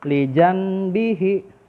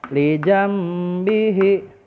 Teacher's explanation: Hye Nah kalau normalnya inikan nun sukun Lee Joon bihi Namun karena ketemunya huruf ba maka suara nun sukun ini berubah menjadi huruf mim